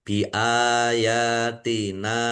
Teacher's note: alif fathah berdiri ya fathah berdiri nun fathah alif ini semuanya mad thobi'i masing-masing Dibaca panjang dua harakat